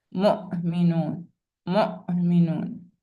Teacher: Hamza, when pronounced, the voice will be completely cut off. · Hamza is from the deepest part of the throat. It is also called the glottal stop.